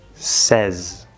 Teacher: S plus the third vowel, e, and then that last S is a Z